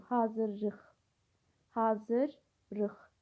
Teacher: Sözün birinci hecasında səs uzanması var. Bu yanlışdır. Uzanma yoxdur.